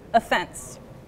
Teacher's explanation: she put the stress on the second syllable